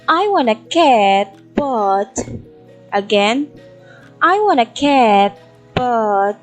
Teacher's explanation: at the word but, it's in the falling intonation, but in the word cat, it rises. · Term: partial falling intonation